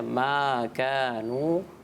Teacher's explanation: ماں آپ نے زیادہ کھینچ دیا, الف سے پہلے زبر تو پھر الف مدہ ہوگا, ایک الف یعنی 2 حرکات کے برابر